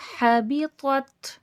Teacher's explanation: ہا حرف حلقی سے ادا ہوگا، حرف حلقی ہے، حلق سے ادا ہوگا، حلق کے درمیانی حصے سے، وسط الحلق سے یہ والا ہا ادا ہوگا۔